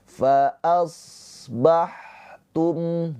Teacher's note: Awas ini huruf shad mempunyai sifat hames ya. Mengalir nafas. Ha juga mempunyai sifat ham mengalir nafas ya.